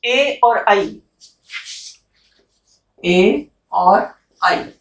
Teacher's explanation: इनका उच्चारण स्थान है कंठ तालु। और अभ्यंतर प्रयत्न क्या है?